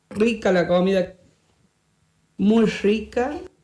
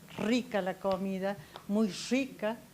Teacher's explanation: la pérdida de las vibraciones de la punta de la lengua del ápice de la lengua contra el alvéolo del paladar esto da como resultado la aparición de un halo fono nuevo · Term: la asimilada